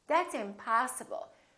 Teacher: Particularly if it's a verb or a noun, we prolong the ah in the stressed syllable